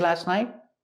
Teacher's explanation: And the T in night is a stop T.